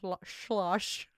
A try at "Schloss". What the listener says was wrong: Schloss. You're saying schlosh, like slosh, but you're saying schlosh.